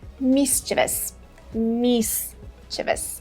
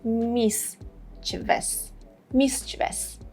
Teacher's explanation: Both British and American pronunciations are mischievous, mischievous. The first part has the main stress, and then we have two schwa sounds. Schwa is a very short A sound.